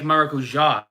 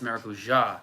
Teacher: the emphasis is quite often on the last syllable